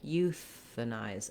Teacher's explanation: And then you just add your anize. The IZE has a voiced Z sound and the diphthong I. This is does follow the spelling conventions for English where when we have an E that is silent at the end of the word, it makes the vowel letter say the vowel name.